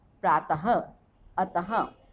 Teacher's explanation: विसर्ग, इनका उच्चारण ह की तरह होता है।